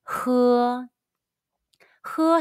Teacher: is it's like the h in the english word hello but push more and stronger air out from your throat and the very back of your tongue to give more friction when you say it say who sounds rough like the j